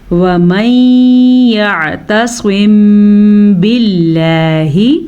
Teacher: اخفاء شفی کا قاعدہ ہو رہا ہے تو ہونٹ بند ہوں گے